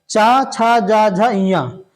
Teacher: च का उच्चारण स्थान तालू या तालव्य होता है